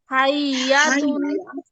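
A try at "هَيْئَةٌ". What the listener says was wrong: আপু হাই ইয়া হবে না, হাই আ। হাই আ। হাইআতুন।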